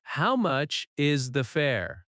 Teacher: Rising tone at fair. Stress fair slightly. · If you need to ask a question, say, how much is the fare? Rising tone at fare. Stress fare slightly.